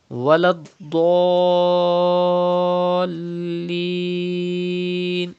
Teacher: And at the end, in the last word, you can see tashdid, sukune asli after alif madda. So it is madde lazim. You have to stretch up to 6 harkat